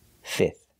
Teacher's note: we do not have to pronounce the f in the middle just three sounds